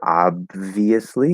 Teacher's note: But you can kind of hold it there for a second, do this sort of like a held stop. Most likely, we're just going to do like a very, very weak B, like very unaspirated, small, tiny B. That's it. And you're going to hear it even less because that V after it immediately starts, right?